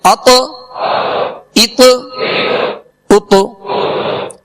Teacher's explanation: اب اس کو اتا اتا یعنی زبر نہیں دیں گے، ات ات ات یعنی مخرج میں لگ کر آواز میں جنبش ہوگی، آواز لوٹتی ہوئی آئے گی. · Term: قلقلہ